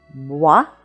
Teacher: Now, in the second syllable, we have the spelling OI, and the spelling OI in French is always going to sound like wa